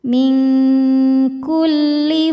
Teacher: nun sukun disamarkan ke kaf disertai dengung. Bunyi engnya besar ya, dengungnya besar. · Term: ikhfa ab'ad